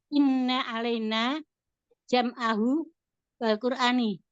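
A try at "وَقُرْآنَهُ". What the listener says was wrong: Wa Qur'ana Mbak, bukan wa Qur'ani. Kalau wa Qur'ani kembali pada Allah, kalau wa Qur'anahu kembali pada Quran.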